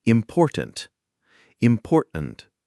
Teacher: It's easier to make that quick stop in your throat than to move your tongue to articulate a full T before the N. This makes the flow of speech smoother and less effortful. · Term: glottal stop T